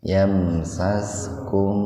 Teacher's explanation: mim mati ketemu sin, sebetulnya idhar sapawi, namun dikarenakan dalam satu kata, maka mimnya dibaca sepintas saja